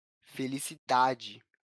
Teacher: a sílaba tônica não aparece na última posição, mas na penúltima posição da palavra, na sílaba da, felicidade. Percebe? A sílaba da é mais evidente nessa palavra quando a gente fala ela.